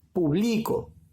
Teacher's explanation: la mayor fuerza de voz la está llevando acá en la penúltima sílaba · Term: palabra grave